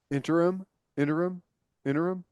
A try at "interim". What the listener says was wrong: You said it weird. You like interim. never heard I'd never heard the emphasis on that syllable in that word.